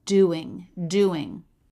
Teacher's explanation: The word doing has D consonant, oo vowel, and then the I as in sit, ng ending.